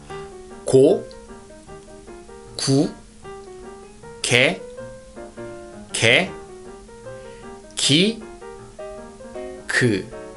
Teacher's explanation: when you pronounce G sound is from the point where back of your tongue meets soft part of the palate. So King Sejong symbolized the tongue shape for making this consonant G.